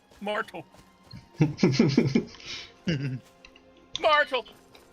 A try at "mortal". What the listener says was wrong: Sounds like you're saying Myrtle.